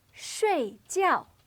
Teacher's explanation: Both of these syllables have a fourth or falling tone.